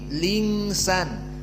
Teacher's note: hamzahnya alinsan dihapus dan harakatnya yang kasrah dimasukkan kepada lam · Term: naql